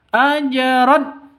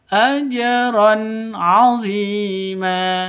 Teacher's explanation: tanwin bertemu dengan Ain jelas terang izhar halqi Ya jelas terang tidak boleh didengungkan tidak boleh dipanjangkan ajron salah a disentak AJR Itu juga salah yang betul ajron